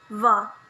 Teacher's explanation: voiced labiodental fricative sound va